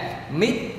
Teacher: khi chúng ta đọc xong từ mít thì cái âm tờ nó để đúng cái vị trí mà chuẩn bị nó phát âm tờ ra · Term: ngắt